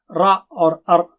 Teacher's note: را اور ار اگر آپ کہیں تو اس میں تکرار ہوتی ہے